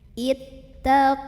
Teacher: Kemudian ada alif lam, namanya alif lam syamsiyah karena alif lamnya menghadapi huruf syamsiyah yaitu lam, maka alif lam ini dilewat saja, tidak perlu dibaca.